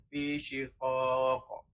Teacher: menebalkan bacaan bunyi huruf qa mati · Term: qalqalah kubra